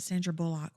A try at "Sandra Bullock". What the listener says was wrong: I love how you put the wrong emphasis on the wrong syllable.